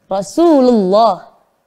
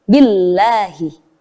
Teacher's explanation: Lafadz Allah itu dibaca tafkhim atau tebal ketika didahului oleh huruf yang berharokat fathah atau dhammah.